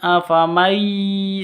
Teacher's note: Cara bacanya masuk ke ya disertai dengung dua ketuk. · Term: idgham bi gunnah